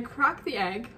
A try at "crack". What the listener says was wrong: You said crock, it's crack. Because you said crock. You said crock the egg.